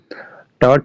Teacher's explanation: ट, ठ, ढ़ ये मूर्धन्य ध्वनि है।